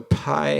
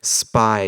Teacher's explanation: Pi has that nice puff of air spy doesn't no puff of air